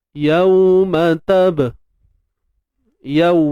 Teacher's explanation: Yaw ni kita sebut bacaan lin. Bacaan yang bersifat lunak.